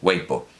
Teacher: la B suena como una P, o una B muy oclusiva, no, nunca fricativa, siempre oclusiva. Pero ya una P es aspirada.